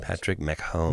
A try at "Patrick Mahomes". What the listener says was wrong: No, there's no Mick. It's Mahomes.